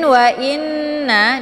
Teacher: dengan gunah musyaddadah cara bacanya hamzahnya dileburkan ke dalam huruf nun dengan cara ditekan sambil ditahan sehingga terbentuk suara yang mendengung